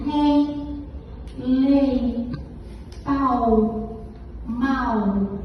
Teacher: são vogais que frequentemente ocupam uma posição de semivogal